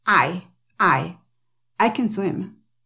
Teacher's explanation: lo sigue un verbo o cuando no lo sigue un verbo Entonces el acento va en el sujeto